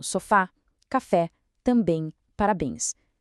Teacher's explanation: Palavras como sofá, café, também, parabéns. Todas elas levam acento para sinalizar que a força da pronúncia está lá no finalzinho, justamente nessas terminações. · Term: oxítonas